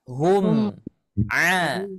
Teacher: Jangan di sana ada gunnah. Jangan di sana ada ikhfa, ada samar-samarnya, tidak ada ya. Tapi jelas hum a ya. Mimnya kebaca, ainnya kebaca. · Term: izhar syafawi